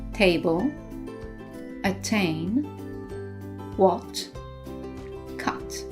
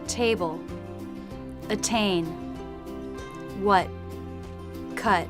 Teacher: in American English they tend to drop the T in the final position